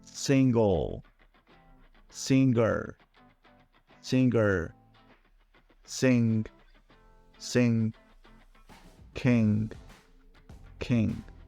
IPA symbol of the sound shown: ŋ